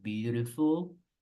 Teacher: In American, just remember the T becomes a soft R. La T en inglés americano, en medio de dos vocales, tiende a sonar como una R.